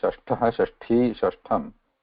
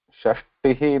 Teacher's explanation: There is no tha. There is alpa prana ta.